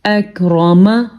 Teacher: ایک بار پھر سن لیں، جب را کے اوپر زبر ہو یا را کے اوپر پیش ہو تو را کو پر پڑھتے ہیں، لیکن اگر را کے نیچے زیر ہو تو را کو باریک پڑھتے ہیں. اس لیے ہم نے اس را کو پر پڑھا ہے کیونکہ اس کے اوپر زبر ہے